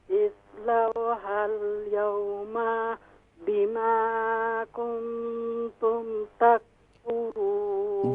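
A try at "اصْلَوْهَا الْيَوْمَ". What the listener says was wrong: जी इस्लौ हल यौम में जो मीम है इसे शॉर्ट साउंड कीजिए। हाँ, मीम को शॉर्ट साउंड करना है क्योंकि मीम के ऊपर कौन सी अलामत है?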